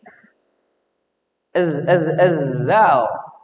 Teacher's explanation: Lidah ujung ke ujung gigi seri atas. Ketika digigit, itu bukan lagi zal.